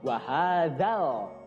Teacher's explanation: Kemudian ada dzal, ya di situ harusnya panjang 2 harokat, tapi karena bertemu dengan alif lam komariah setelahnya, ya dza-nya langsung masuk ke huruf alif lam